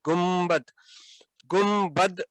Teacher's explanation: نون کے بعد میم کہیں لکھا نہیں ہوا، لیکن آواز میں دیکھیں کہ ادائیگی کے وقت وہ آتا ہے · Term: اقلاب